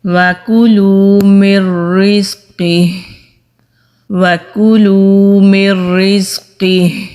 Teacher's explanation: نون کی آواز نہیں آ رہی کیونکہ ہم نے را کے اوپر زور دیا اور نون کی آواز کو میم اور را میں جذب کر دیا۔